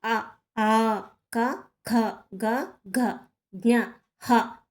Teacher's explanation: కంఠ్యములు అంటే కంఠం నుంచి పుట్టినవి.